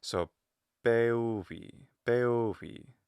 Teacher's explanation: High, high, low, low. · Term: pitch accent